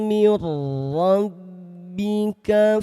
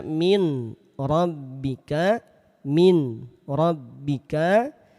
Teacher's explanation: Nun sukunnya dibaca lebur tanpa ditahan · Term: idgham bila gunah